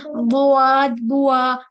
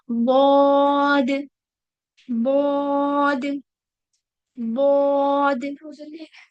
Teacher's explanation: और हम इसको जब बोलेंगे, ठीक है, तो हम जब इसको पढ़ेंगे तो हम ऐसा नहीं पढ़ेंगे, बुआद, बुआ, वाव का साउंड नहीं होना चाहिए, बुआद, बुआद, ऐसा नहीं होगा।